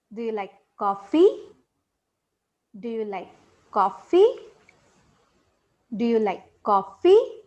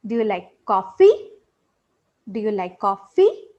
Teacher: did you notice we go up the last part is said at higher pitch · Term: rising tone